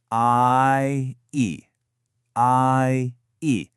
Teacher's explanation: Your jaw starts open for the A and then it closes up as your tongue moves for the E. That glide, that movement, that's a diff thong. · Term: diphthong